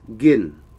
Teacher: to eat in Thai is gin, medium tone